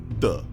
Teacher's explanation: By moving the tip of your tongue to the alveolar ridge, which is just behind the top row of teeth, you will produce D.